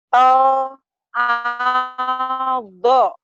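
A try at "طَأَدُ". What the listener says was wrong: To'ado. Jangan lama-lama. To'ado nggak ada yang panjang. To'ado.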